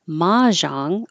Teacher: I usually heard it with stress on the first syllable, mahjong, but in Merriam-Webster, they showed it with stress on the second syllable as one of the first entries, and that means it's more common.